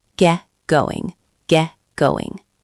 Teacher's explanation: The T in get stops quickly. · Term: glottal stop